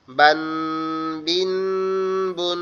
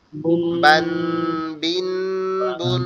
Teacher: নুন সাকিন লুকিয়ে থাকলে এটাকে গুণনা হবে, ঠিক আছে? নাকের মধ্যে নিয়ে পড়তে হবে